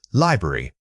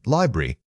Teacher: Remember that stress pattern on the very first syllable.